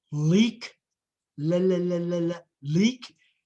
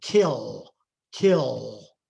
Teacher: But when it comes after a vowel, there is a velar articulation added to the L. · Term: dark L